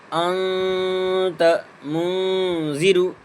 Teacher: تنوین یا نون ساکین کے بعد حرف اخفا آوے تو نون کی آواز کو ناک میں چھپا کر کے پڑھا جاتا ہے، پڑھنا چاہیے۔ نون نوکے زبان تالو سے ہٹا کر، جیسے اور اردو میں پنکھا کے نون کو پڑھتے ہیں۔ اخفا کی مقدار 1 الف ہے، جیسے انت منذر، نون ساکن کے بعد جو تا ہے یہ اخفا سے آ رہا ہے، اس لیے اس پر اخفا ہوگا اور اس پر گننا کر کے ناک میں نون کی آواز کو ناک میں چھپا کر پڑھیں گے۔